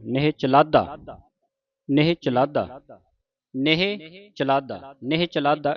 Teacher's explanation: ਚਲਾਧਾ ਤੇ ਅਧਕ ਲਾ ਕੇ ਉਚਾਰਨ ਕਰਨਾ ਕੱਸ ਕੇ ਬੋਲਣਾ